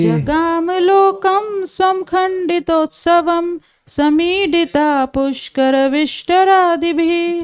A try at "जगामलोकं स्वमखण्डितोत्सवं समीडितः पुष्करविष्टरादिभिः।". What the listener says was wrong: देखिए स्वम बोलना पड़ेगा आपको, स्वमखण्डितोत्सवम आएगा। जगामलोकं स्वमखण्डितोत्सवं समीडितः पुष्करविष्टरादिभिः।